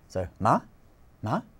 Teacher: It's just going up at the end of a word.